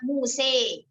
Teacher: condong ke kasroh dengan menurunkan bibir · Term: imalah